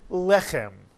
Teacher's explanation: The second syllable is chem, the chet with a segol, followed by a final mem, and the word is pronounced lechem. And notice in this word, the accent is on the first syllable.